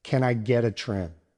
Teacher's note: The words get and a blend together into geta. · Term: connected speech